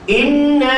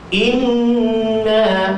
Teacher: Jadi kalau kita baca inna, tak cukup dengung. Ada dengung tapi tak cukup.